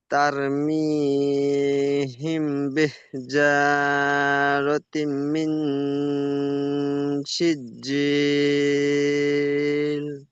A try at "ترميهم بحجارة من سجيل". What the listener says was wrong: মাশাআল্লাহ, খুব সুন্দর পড়েছেন।